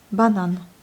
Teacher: L'accent va sur la dernière syllabe.